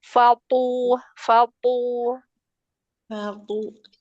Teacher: th-nya aja yang tebal. Fnya enggak usah tebal.